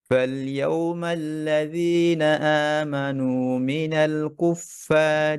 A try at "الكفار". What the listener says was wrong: এই কাফ পড়ার সময় খেয়াল রাখতে যেন কুফফার না চলে আসে। কি কুফফার, কু, কু জিহ্বার গোড়া, উপরের কাফ, কু, কুফফারি।